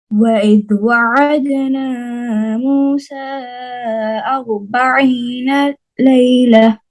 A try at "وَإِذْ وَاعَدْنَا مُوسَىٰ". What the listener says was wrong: وإذ واو खड़ी जबर वाह है। وإذ وعدنا موسى 40 ليلة